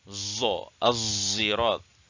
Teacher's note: Iaitu sebutan ishmam sad dengan zai ni adalah seolah-olah bunyi za orang ajam.